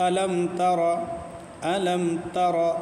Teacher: ٹھیک، اسے دیکھیں یہاں کیا ہے، میم، میم کے بعد کیا ہے، تا، تو تا نہ با اور نہ میم، نہ میم ہے نہ با ہے بلکہ تا ہے، تو ان دونوں کے علاوہ آیا تو اظہار شفوی، غنہ نہیں ہوگا یہاں پہ